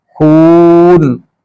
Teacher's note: खून जब कहना है तो नाक से आवाज ना आए, खून नहीं कहना, मुंह से सारी आवाज निकली